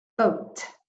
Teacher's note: first the B it's made with the lips primarily and the T at the end of the word is made primarily with the teeth boat but the vowel sound in the middle is